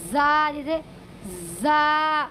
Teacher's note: زا کو پڑھیں گے بالکل تیز سیٹی کے ساتھ